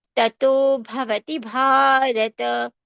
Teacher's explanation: Both the bha should be given more strength and more breath.